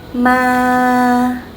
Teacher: to pronounce the tone, you just keep your voice flat. Okay, for example, ma is flat and a little bit long, like that. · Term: no tone